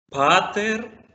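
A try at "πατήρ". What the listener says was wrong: Otra vez haciéndole más fuerza a la segunda sílaba. Ahora ya cambió toda la cosa.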